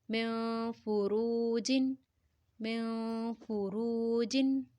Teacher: روا کو پر پڑھیں گے کیونکہ را کے اوپر پیش ہے